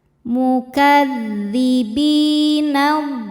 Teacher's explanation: Bi hukumnya mad thobi'i zohiri. Sebab ada ya sukun yang sebelumnya berharakat kasrah. Cara bacanya huruf bnya panjang dua harakat. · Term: mad tabi'i dhahiri